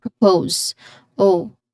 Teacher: there's a clear O dip thong at the end